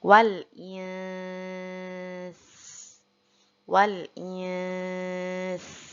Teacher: Di sini nunnya tetap kita dengungkan dulu, lalu sinnya kita hamaskan. Jadi sinnya itu harus disertai dengan nafas atau angin yang keluar, itu namanya hamas.